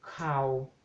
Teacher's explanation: Y después tenemos la palabra cow, tenemos un diptongo largo, au, sí, a, más o, sí, entonces cow, si aplicamos el tono bajo, obtenemos cow, eso significa noticias